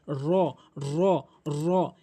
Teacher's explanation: এই র হরফটি পুর করে উচ্চারণ করতে হবে মুখ গোলাকার করে উচ্চারণ করতে হবে অর্থাৎ জিহ্বার আগার উল্টো পিঠটা উপরে তালুর সঙ্গে লাগাতে হবে জিহ্বার আগার উল্টো পিঠটা উপরে তালুর সঙ্গে লাগাতে হবে র এভাবে উচ্চারণ করবেন।